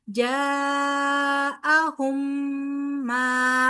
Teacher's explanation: मीम साकिन के बाद फिर मीम आ रहा है, तो मीम का मीम के साथ इदगाम होगा, ठीक है। ये इदगाम में शफवी है, यहाँ पर हम फिर क्या करेंगे, गुन्ना करेंगे और फिर मीम मुशद्दद मा, ठीक है।